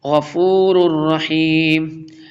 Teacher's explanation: تنوین کے بعد را آ رہا، را کا لیٹر آ رہا ہے، یہاں پہ ادغام یرملون ہوگا